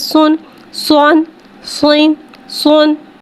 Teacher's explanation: सौत में दो पेश है, दो पेश को होठों की गुलाई के साथ अदा करके पढ़ेंगे। सौत दो पेश सुन, सोन, सोइन, सोन को एक अलीफ यानी 3 हरकत के बराबर खींच के पढ़ेंगे।